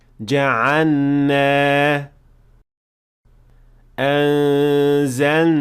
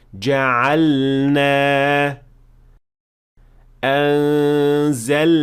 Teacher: And this happens because the lam and noon are pronounced from two spots that are very close to each other. But you should definitely pronounce the lam clearly and with idhar before moving on to the noon